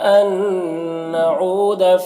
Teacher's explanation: یہاں پر نون ساکن کے بعد نون حروف یومن میں سے، تو نون کو نون سے ملا کر غنہ کے ساتھ پڑھیں گے، اس کو ادغام ناقص کہتے ہیں۔